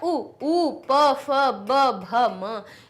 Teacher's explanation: ओष्ठ से निकल रहे हैं, इसलिए इनको ओष्ठ्य वर्ण कहा जाता है।